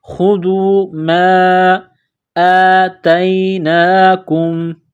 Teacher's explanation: ورفعنا فوقکم الطور خذوا، خوا کو موٹا کرنا ہے، ذال کو باریک کرنا ہے، خذوا ما آتیناکم، میم الف مد زبر ما، یہ مد ہے، اس کو تھوڑا سا کھینچیں گے